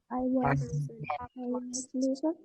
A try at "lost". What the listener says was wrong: Ya, cara bacanya pakai O, lost. Kalau present yang verb 1, verb dasar, bacanya pakai U, betul, lose ya. L-O-S-E, lose. Kalau pakai T, jadi pakai O, lost. Lost.